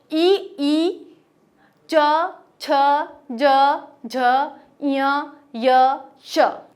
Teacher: जो हमारी जीभ है, जो जीवा है हमारी, उसका जो पिछला वाला भाग है वो ऊपर तालु को स्पर्श करेगा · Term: तालव्य